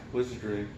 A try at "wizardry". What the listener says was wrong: No, it just sounds like you're talking about piss magic almost, because it sounds like you, emphasis in the whiz part. It's wizardry.